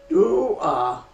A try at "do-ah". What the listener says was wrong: Slow down on the ah. There you go, and your chin came down. So it's not do-ah. Let's pretend, because a drawl where we open our mouths is ideal.